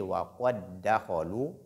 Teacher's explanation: Ensuite, dakhalu, il y a dal. Donc, dal et dal. Mais la première lettre porte sukun. Alors là, l'assimilation est obligatoire. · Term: al-idgham